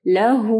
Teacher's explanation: اس کو 2 سیکنڈ کے لیے یعنی اس کو آپ سٹریچ کریں گے، لمبا کریں گے ہاں کو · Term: مد صلہ صغریٰ